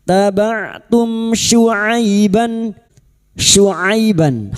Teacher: Mim sukun bertemu syin idhar syafawi. Mim sukun dibaca jelas tanpa mendengung bertemunya mim sukun dengan huruf hijaiyah selain mim dan ba namanya izhar syafawi. · Maka kita uraikan mim sukun bertemu shin, idhar syafawi. Mim sukun dibaca jelas tanpa mendengung.